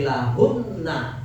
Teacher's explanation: nun bertasdid, mim bertasdid boleh dita ditahan seperti lahunna. Wakaf lahun tahan enggak apa-apa ya. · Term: gunah lazimah